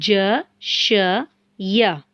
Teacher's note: जुबान का दरमियानी हिस्सा बिलमुकाबिल ऊपर के तालु से टक्कर खाए تو یہ 3 حروف ادا ہوتے ہیں اور یہ تینوں باریک حروف ہیں ج ش ی.